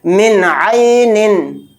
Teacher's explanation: ظاہر کا مطلب ہے اس چیز کو نون کو پورا ادا کریں گے، ناک میں نہیں چھپانا ہے، یعنی بالکل نون کی آواز صاف نکالنی ہے · ہا اظہار حلقی کے 6 حروف میں سے ایک حرف ہے، تو یہاں پر بھی اظہار کا قاعدہ ہو رہا ہے. نون کی آواز کو ظاہر کر کے بلا غنہ کے جلد پڑھیں گے